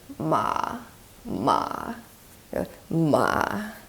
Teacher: you go into creaky voice and then kind of rise up a little bit.